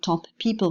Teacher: We can have a voiceless sporty bilabial plosive with non-audible release in top people, for instance. The first plosive is not released. What we hear is the release of the second plosive.